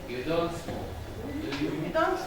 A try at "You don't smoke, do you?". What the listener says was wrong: This is still rising. Still rising. I want it falling. It's all rising. No, this is still rising. This is falling. It's like you're talking to your son and you're confirming.